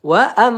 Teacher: mim bertasdid ya gunah musyaddadah kita tahan ya dua atau tiga harakat